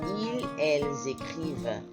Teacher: The reason we're getting the Z sound is because of the liaison. L, E-L-L-E-S, ends with an S, and écrire starts with a vowel with an E.